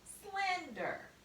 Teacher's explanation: the accent most of the time falls on the first syllable so you would say the first syllable louder longer and stronger